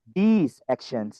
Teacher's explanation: pastikan S-nya ada dan this-nya tidak sependek this is my book. Tidak sependek itu, tapi these actions.